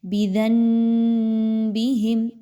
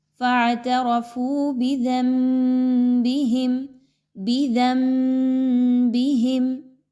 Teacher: آپ نے یہاں پہ نون کو بالکل نہیں پڑھنا، میم کو پڑھنا ہے اور آواز کو ناک میں بھی لے کر جانا ہے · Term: اقلاب